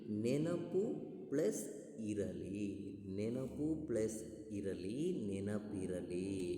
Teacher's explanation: ಉಕಾರಕ್ಕೆ ಈ ಕಾರ ಬಂದು ಈ ಕಾರ ಆಗಿದೆ ಅದರಲ್ಲಿ ಉ ಅನ್ನೋ ಅಕ್ಷರ ಏನಾಗಿದೆ ಬಿಟ್ಟು ಹೋಗಿದೆ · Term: ಲೋಪ ಸಂಧಿ